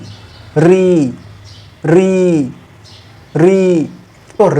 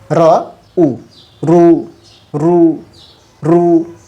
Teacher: করি না কেন ই থেকে শুরু হলে শেষ পর্যন্ত ই থাকবে কিন্তু যখন আমরা ঋ উচ্চারণ করছি উচ্চারণ দুইটা বর্ণের হচ্ছে এক র এবং শেষের দিকে ই